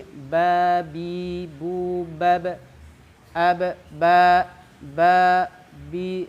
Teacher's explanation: pertama kita deteksi dari tebal tipisnya ba ini masuk ke istifal ya tipis